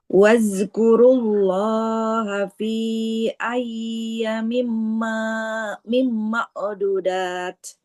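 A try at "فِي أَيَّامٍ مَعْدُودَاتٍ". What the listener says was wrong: fi ayya ya-nya panjang. Ma'dudat. Sedalnya juga panjang. Ma'du. Dalnya domah ada wawu di depannya. Harus panjang. Ma'dudat.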